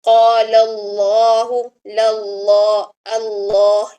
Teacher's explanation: یہاں پر دیکھیں، اس میں جلالہ سے پہلے جو ہے وہ لام کے اوپر، قولا کے لام کے اوپر زبر ہے اور آگے اس میں جلالہ ہے، یعنی اس میں جلالہ سے پہلے زبر آ گئی ہے تو یہاں پر اس میں جلالہ کو موٹا پڑھا جائے گا، قال اللہ، للہ، اللہ اس طرح سے، ٹھیک ہے۔